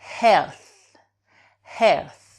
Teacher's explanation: le TH, c'est la langue entre les dents